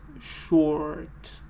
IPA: ɔː(r)